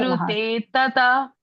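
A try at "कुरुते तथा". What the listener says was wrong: Tatha. Tha is Mahaprana.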